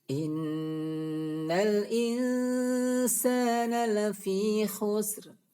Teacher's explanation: nun bertasydid tersebut dibaca dengan dengung yang jelas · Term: hunnah musyaddadah